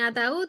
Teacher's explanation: ataúd es una palabra que tiene la fuerza de pronunciación en la última sílaba